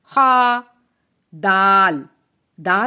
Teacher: زبان کی نوک اوپر کے 2 دانتوں کی جڑ سے لگے تو دال ادا ہوتا ہے